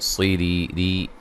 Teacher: را کو باریک پڑھیں گے اور یا مدہ ہے، صاد کو موٹا ادا کریں گے.